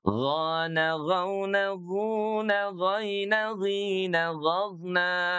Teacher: Huruf ghain itu keluar dari tekak bahagian atas atau tenggorokan bagian atas ya. Dengan suara mengalir ya. Yang tebal isti'la dan mengalir lembut rokhwa ya.